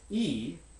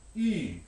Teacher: front vowel and you'll find a pair of them actually where the one on the left is unrounded high front e and the one on the right which is written with the letter y in the ipa is high front rounded e